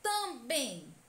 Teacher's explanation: a palavra também é oxítona pois a última sílaba tônica também a sílaba bem É a mais intensa a que demora mais a ser pronunciada